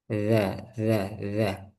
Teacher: ujung lidah menempel pada ujung gigi saya di atas. Nah, ini ujung giginya sini ditempelkan ujung lidahnya itu di bagian sini. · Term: zal